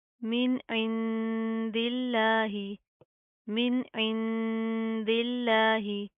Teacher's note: लफ्ज़ अल्लाह को बारीक पढ़ेंगे, पतला पढ़ेंगे